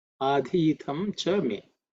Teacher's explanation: fourth letter in the thavarga, so it has to be aspirated